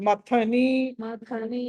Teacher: థా అన్నది మహాప్రాణం ఒత్తి పలకాలి.